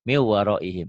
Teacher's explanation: Nun mati ketemu wow, jadi berubah wow. Min jadi miu ya. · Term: idgham